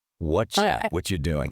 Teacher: >> The most common example is when a T sound meets a Y sound. When you say what are you, the T in what and the Y in you smash together on your palate. · The T and the Y and you smash together on your palate. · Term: assimilation